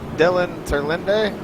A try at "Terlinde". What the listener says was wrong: Turlin. Forget the E.